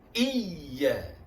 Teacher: Hamzah ya sablu di bawah i, ya alif di atas ya. Pada ya yang bertasdid ada hanjutan ringan, ada nabr, hanjutan ringan, suara menaik sedikit ya.